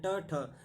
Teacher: ये प्रथम और द्वितीय वर्ण जो होते हैं अघोष होते हैं